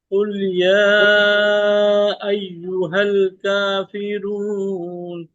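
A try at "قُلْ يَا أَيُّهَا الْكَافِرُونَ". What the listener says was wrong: रा को मोटा पढ़ना है, काफिरून।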